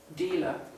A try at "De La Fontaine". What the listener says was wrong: It's a D. It sounded like dealer Fontaine. La Fontaine.